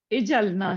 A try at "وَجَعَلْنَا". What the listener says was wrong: اجلنا تو ہے, لیکن یہ الف جو ہے وہ اس کو ہم واو, اجلنا لگا ہوا نہیں ہے اس پہ, لیکن یہ الف جو ہے وہ ہے وصل, حمزہ وصل اس پر ہے, تو اس کو ہم واو کے ساتھ ملا کے پڑھیں گے نا.